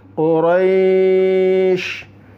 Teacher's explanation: Karena ini dhammah maka qu. Roi-nya panjang dulu baru dimatikan atau diwakafkan.